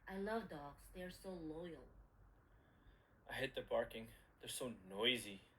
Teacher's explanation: speaker b opposes um speaker a's idea he emphasized uh noisy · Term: stress